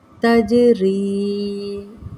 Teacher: تجری، جیم پر جزم قلقلہ ہوگا، را زیر یا ری یا مدہ کا قاعدہ۔